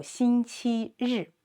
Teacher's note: rolled up your tongue, as in the English word pleasure, that 日 sound